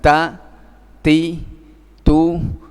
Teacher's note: memiliki sifat hams dengan tekanan Maksudnya yang kemudian menjadikan ada nafas yang keluar